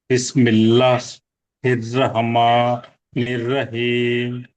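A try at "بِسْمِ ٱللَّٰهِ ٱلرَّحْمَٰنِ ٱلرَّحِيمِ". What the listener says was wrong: జాగ్రత్తగా వినండి. బిస్మిల్లాహ్ ఆపొద్దు అలాగా. ఓకేనా?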